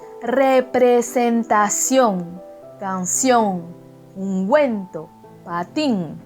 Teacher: En espagnol, les nasales tels que en, n'existent pas. Vous devez ouvrir bien la bouche